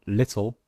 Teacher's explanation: Example, in the word little, the L sound is in fact a new syllable.